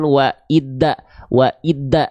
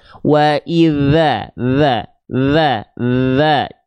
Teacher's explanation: sentuhkan ujung lidah kita ke Ujung gigi seri atas kita